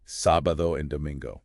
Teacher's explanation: With the stress on the A in sábado and the N in domingo.